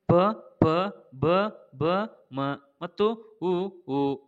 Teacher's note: ಓಷ್ಠ್ಯ ಅಕ್ಷರಗಳು ತುಟಿಗಳ ಸಹಾಯದಿಂದ ಹುಟ್ಟುತ್ತವೆ.